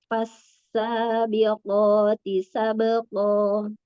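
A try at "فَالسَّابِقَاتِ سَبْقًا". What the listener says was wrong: Coba huruf fa-nya diambil dulu. Jangan tiba-tiba langsung fasa. Jadi kalau kita dengarkan tuh, kita tuh masih belum paham. Ini yang diucapkan huruf apa ya yang pertamanya gitu ya.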